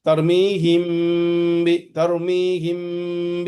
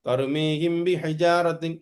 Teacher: मीम सुकून के बाद बा आ गया, तो हमको पढ़ना इख्फा शफवी। शफवी मीन्स क्या, हमारा जो लिप्स है उसको कहते हैं।